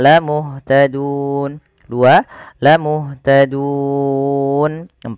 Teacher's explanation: kita boleh memilih untuk memanjangkan lafal dun dengan mematikan nunnya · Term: mad arid lisukun